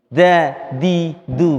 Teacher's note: bukan lidahnya ke atas tapi lidahnya nempel kepada gigi ya E apa tempat keluarnya gigi da di du kayak yang